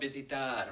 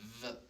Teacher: Now the verb visitar, remember V's, it's not like a V sound, I'm not putting my teeth on my lips, V, I'm saying visitar, it's more like a B.